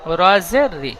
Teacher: রর নিচে জের এসেছে, তাই রকে বারিক করে পড়বো। এখানে আর হারাকাতের ইজরা করবে না, শুধু র অক্ষরটি।